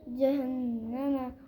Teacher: ٹھیک ہے اس کے اوپر کیا ہوگا غنہ ہوگا. نون کی آواز کو ناک میں چھپائیں گے ایک الف یعنی 1 سیکنڈ کے برابر